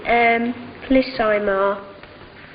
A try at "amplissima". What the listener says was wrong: Ema, not ima.